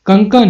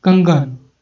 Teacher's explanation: तो ये कंकन है अघोष है, और उसको हमने चेंज करके क्या बना दिया घोष बना दिया कंगन। तो ये इसके आवाज में थोड़ा सा परिवर्तन हो गया। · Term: घोषीकरण